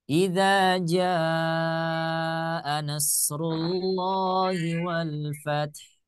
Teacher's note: ketika huruf mad dua harakat saya baca empat harakat